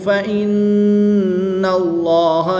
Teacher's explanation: نون مشدد میں غنہ کر کے پڑھیں گے۔ اس میں جلالت اللہ عز و جل کے لام سے پہلے نون پر زبر ہے تو اس لیے اس لام کو پر یعنی موٹا پڑھیں گے۔